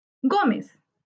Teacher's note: Gómez es una palabra grave. Su sílaba tónica está en go, que es la penúltima sílaba. Se tilda porque termina en z.